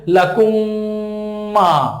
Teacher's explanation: মিম সাকিনের পরে যদি মিম আসে তাহলে মিম সাকিনকে পরের মিমের সাথে মিলিয়ে গুণনা করে পড়তে হবে, একালিফ পরিমাণ গুণনা করে, তাকে মিম সাকিনের ইদগাম বলে।